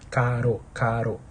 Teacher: Então, em caro, você sente que há uma vibração. Então, a língua faz tipo um movimento de chicote contra os alvéolos, tá? Caro, caro.